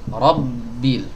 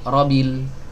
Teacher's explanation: Nah, huruf ba-nya bertasydid. Jadi huruf ro ini harokat fathahnya segera masuk ke huruf ba. Robbil, bukan robil.